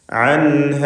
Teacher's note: സാക്കിനത്ത നൂൻ ശേഷം ഹ ഇൽഹാർ ഹൽക്കി നൽകി നൂനിനെ വെളിവാക്കണം.